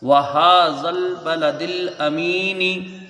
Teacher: ہا کے اوپر کھڑا زبر ہے، 1 الف کی اس کی مقدار رہے گی